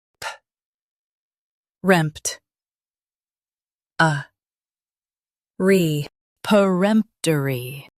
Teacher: Stress rempt and keep p soft.